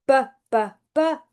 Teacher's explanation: When you go bbb, those vocal cords are vibrating and you can feel that here.